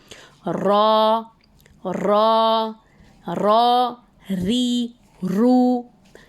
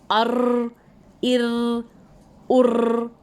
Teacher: टिप की बात नहीं हो रही है, ज़बान का किनारा दांतों की जड़ यानी मसूड़ों को लगकर सामने के जो ऊपर के दांत हैं उसको जब टच होता है तब रॉ की अदायगी होती है।